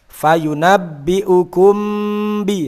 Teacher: Kenapa dikatakan syafawi? Karena antara mim dan ba ini keluar dari makhraj yang sama, yakni huruf syafatain atau syafatani. Jadi huruf asyafatan, huruf yang keluar dari 2 bibir itu ada fa, mim, ba, wawu. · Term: ikhfa syafawi